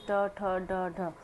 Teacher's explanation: इसे कौन से निकलने वाले व्यंजन है, ट ठ ड ढ, ये कहाँ से निकलते हैं, मूर्धा से निकलते हैं।